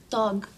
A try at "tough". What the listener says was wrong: Thug? Oh, remember I told you the GH sometimes sounds like an F. It's tough, like rough or laugh.